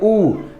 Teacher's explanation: ऊ का उच्चारण स्थान क्या है बाबू? ओष्ठ है, होठ है